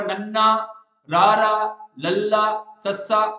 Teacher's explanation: ਦੰਦਾਂ ਦੇ ਨਾਲ ਜੀਭ ਟੱਚ ਨਹੀਂ ਹੋ ਰਹੀ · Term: ਦੰਤ ਪਠਾਰੀ